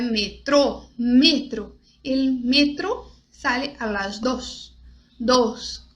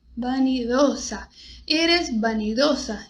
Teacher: Então, sempre o O bem fechado na hora de pronunciar as palavras em espanhol.